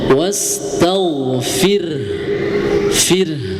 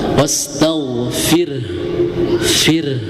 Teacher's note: Tetapi jadi catatan di huruf ro-nya, pada huruf ro wastaghfir, nah itu dibacanya tarqiq, tipis, ya.